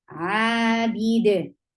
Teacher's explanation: And but dal with sukoon will activate your qalqala. Yes, so you will give qalqala at the end.